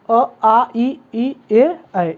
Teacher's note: आपके जो ओठों की स्थिति होगी वह वृत्त की तरह नहीं होगी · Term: आवृत्तमुखी